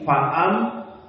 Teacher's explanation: maka mim makhrajnya syafatain, dua bibir